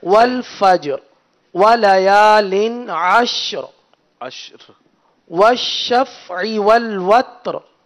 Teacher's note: ہر آیت کے آخر میں جو ساکن حرف ہے را، ایک تو اس کو باریک ادا کرنا ہے اور پھر اس کو ساکن ہی ادا کرنا ہے